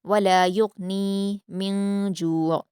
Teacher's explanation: غین پر قلقلہ نہیں کریں گے، یا کو غین سے ملا کر پڑھیں گے اور بغیر قلقلہ کے پڑھیں گے۔